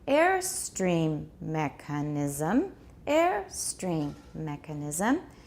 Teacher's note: air gets the tonic stress because this is a compound noun within a compound noun